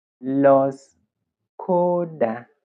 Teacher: with a rising intonation from the beginning to the middle and then the falling intonation at the end